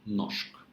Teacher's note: The second rule is that R plus S give us sh sound. Not rsh, but just sh sound.